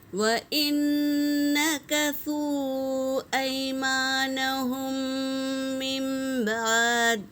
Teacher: میم ساکن کے بعد میم آیا ہے تو دونوں میم کو ملا کر غنّے کے ساتھ پڑھیں گے، اسے ادغام شفوی کہتے ہیں۔